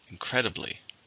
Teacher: How many syllables are in incredibly? There are 4. Stress on the second.